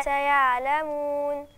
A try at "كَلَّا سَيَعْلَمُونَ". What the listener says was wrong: فين النون؟ لازم اعمل توسط، عشان لو ما عملتش توسط النون ايه مش هتبان من صفاتها كده. سيعلمون.